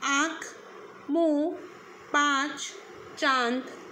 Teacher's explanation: लेकिन जब हम अनुनासिक का प्रयोग करते हैं तो उस समय मुख से निकलने वाली हवा हमारे नाक और मुख दोनों से निकलती है।